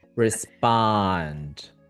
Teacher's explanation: feel how the first syllable is very fast compared to the second one is longer